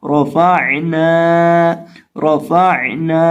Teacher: اور عین کو بھی ہم حلق کے بیچ سے ادا کریں گے کیونکہ عین حلق کے درمیان سے ادا ہوتا ہے اور عین ساکن ہے. اور نون کو یہاں ہم لمبا کر کے پڑھیں گے، ایک الف کے برابر کھینچ کے پڑھیں گے کیونکہ اس کے ساتھ الف ہے. · فا کے پڑھنے کا طریقہ کار ہے نچلے ہونٹ کا وصل جب سامنے والے اوپر کے 2 دانتوں کے کنارے سے لگتا ہے تو فا ادا ہوتا ہے، تو اس کو اس کے مخرج اور طریقہ کار کے مطابق پڑھیں گے.